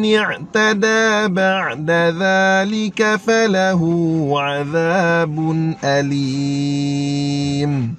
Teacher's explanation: Bun, bu muncul mulut, nun senyum balik